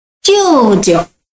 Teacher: First one is first tone. Second one is neutral tone.